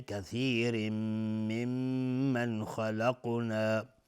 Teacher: و میم مشدد دو حرکت غنه میدیم